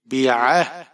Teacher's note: عین آپ نے گلے کے درمیان سے ادا کرنا ہے، ہا آپ نے سینے والی طرف جو حلق کا حصہ ہے وہاں سے ادا کریں گے